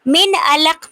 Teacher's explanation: नून साकिन के बाद हरूफे हल्की में से आइन आ रहा है, तो यहाँ पे हम इजहार करेंगे, नून को जाहिर करके पढ़ेंगे